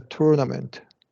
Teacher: for tournament, we usually do a schwa r.